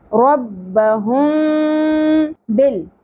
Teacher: میم ساکن کے بعد حرف با آ گیا تو یہاں پر بھی ہم غنہ کریں گے اور میم کی آواز کو چھپاتے ہوئے پڑھیں گے، تو اس کو کہیں گے اخفائے شفوی.